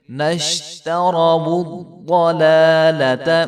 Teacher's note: ضاد کو جو ہے وہ خوب موٹا کر کے پڑھیں گے، نشتروا الضلالۃ، تو صرف ایک لام کو لمبا کریں گے، دوسرے لام کو لمبا نہیں کریں گے۔